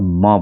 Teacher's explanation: जब भी बोलेंगे तो आपके ओठ दोनों ओठ एक दूसरे को छू रहे होंगे। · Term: ओष्ठ